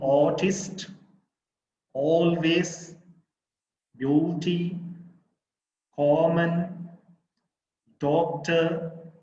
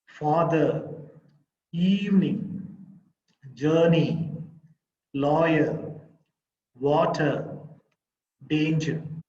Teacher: all these are first syllables stressed